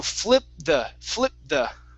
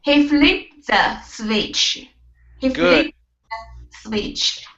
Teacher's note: with the t sound there at the end of flipped you can you can mix it with the word the